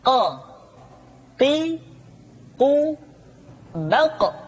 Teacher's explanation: diucapkan dengan cara menyentuhkan pangkal lidah kita dengan langit-langit bagian belakang Q Qi qu baq diucapkan dengan suara yang tebal dan dalam · diucapkan dengan suara yang tebal dan dalam posisi sukun maka terdengar pantulan suara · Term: huruf q, Huruf Qaf